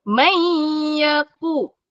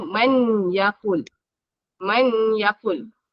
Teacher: Nun kosong atau nun sakinah bertemu ya sepatutnya kena dengung.